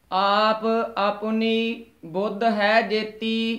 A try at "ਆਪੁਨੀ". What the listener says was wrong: ਆਪਣੀ ਪਦ ਦੇ ਜੋ ਔਂਕੜ ਲੱਗਿਆ ਪੱਪੇ ਦੇ ਉਚਾਰਨ ਕਰਨਾ ਹੈ। ਆਪਣੀ ਨਹੀਂ ਕਹਿਣਾ ਹੈ।